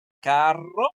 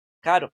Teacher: En uno suena fuerte la R, carro, y en el otro suena suave, caro